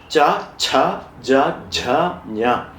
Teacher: The group of Cha, Cha, Ja, Jha, Nya is Talavya, called palatal in English.